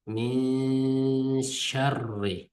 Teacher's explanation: Ya'ni g'unnalik ixfa. Ya'ni nun harfini sal yushiribroq so'zg'andek bir xil o'qiymiz. Min deb nunni o'zi to'xtab turib, nunni ochiq chiqarmay o'qiymiz.